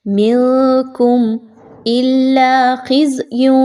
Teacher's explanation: نون کی آواز کو آپ نے زیادہ کلیئر نہیں پڑھنا، مخفی کر کے پڑھنا ہے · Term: اخفا